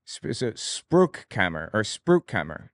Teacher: The CH is fricative. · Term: Fricative CH